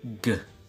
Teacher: when back of the tongue is in contact with soft palate